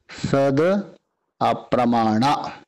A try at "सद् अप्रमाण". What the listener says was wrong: महाराज जी दकार हलंत है,